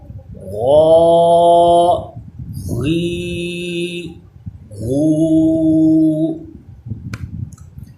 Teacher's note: اس کا مخرج بھی خا کی طرح حلق کے اوپر والے حصے سے ناک میں آواز نہ جائے اور پور پڑا جائے۔ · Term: غین